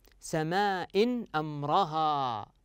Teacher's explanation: اظهار تنوين كسر اتى بعده حرف الهمزه والهمزه من حروف الاظهار